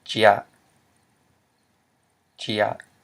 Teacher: Because we have a mid-consonant, j, followed by a live syllable, and remember diphthongs are considered live syllables, so it'd be a low tone.